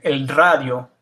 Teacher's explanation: when you have a double R, or the R is in front of the word, it's pronounced with the R that most people associate with Spanish, the R. A lot of English speakers can't do it at first.